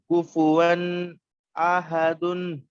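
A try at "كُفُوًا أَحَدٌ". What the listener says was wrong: واؤ نہیں ون. واؤ نہیں، ناک میں نہیں لے جانا ہے آواز. تنوین کے بعد حمزہ ہے. کوفو کوفو ون احد.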